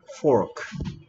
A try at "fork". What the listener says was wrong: pork 하면 돼. pork 하면 돼지고기라 했어. fork야.